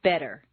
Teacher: Just as you don't say the T in listen, the double T in better is pronounced D, better. Any other pronunciation will sound foreign, strange, wrong, or different to a native speaker.